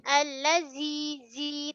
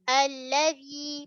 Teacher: Mesti keluarkan sikit ujung lidah.